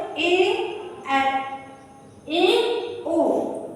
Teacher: अर्धसमृद्ध में थोड़ा सा मुंह खुल जाए, विवृद्ध में थोड़ा सा मुंह हल्का सा खुला बोल दिए, और अर्धसमृद्ध में मतलब बीच का, अर्ध मतलब आधा मुंह खुला हो